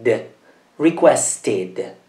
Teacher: il verbo finisce in una t e quindi la vocale va pronunciata